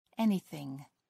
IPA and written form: ˈɛnɪˌθɪŋ (anything)